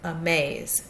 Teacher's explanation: our sect our long a a is in the second syllable our second syllable is the one that's accented here